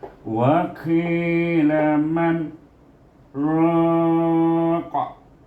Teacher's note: iaitu kita berhenti dekat man tanpa mengambil nafas, kita sambung dengan raqa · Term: saktah